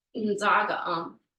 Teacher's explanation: it's not really a strong I sound. It's more clipped. It's kind of cut off, like n. Almost like you're just going like this, inzaga.